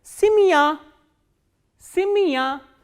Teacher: when ye is in unstressed position, it is pronounced as e